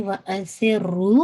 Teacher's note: رو پہ شد ہے تو اس کو آپ نے ہٹ کرنا ہے، رو کو آپ نے 2 کاؤنٹ پڑھنا ہے